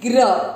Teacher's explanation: चौथा चरण ग्र, देखिए आप इसका कैसे ये ग्र बना, इधर देखेंगे राइट साइड में, इसमें है ग आधा, ग के नीचे अलंत दिख रहा है यानी ग है आधा और ये जो मात्रा दिख रही है ये है र, र है पूरा, इसको पढ़ेंगे ग्र। ग आधा है इसलिए ग में अ मिक्स नहीं करेंगे, र पूरा है अक्षर पूरा होने पर उसमें अ मिक्स करेंगे, इसको बोलेंगे ग्र।